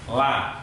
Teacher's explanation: Yang pertama adalah jahr, yaitu nafas ditahan. La, tetap keluar nafasnya, tapi tidak begitu banyak.